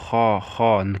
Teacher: Эта буква произносится чуть тверже, Ха, как бы на О. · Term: букву Ха